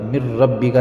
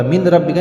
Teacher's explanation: پہلا حرف نون ہے اور دوسرا حرف را ہے، تو پہلا حرف دوسرے حرف سے بالکل بدل گیا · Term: ادغام تام